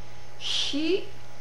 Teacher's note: Your mouth is in position for I, hi, so it's a little bit of a constricted H sound.